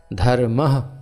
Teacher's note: जैसे धर्म के आगे दो बिंदी लगेंगी तो उनको बोलेंगे धर्म हल्का सा ह की ध्वनि वायु को बाहर की तरफ धकेला जाएगा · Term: विसर्ग